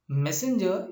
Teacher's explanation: Messenger is a trisyllabic word, but the stress is on the first syllable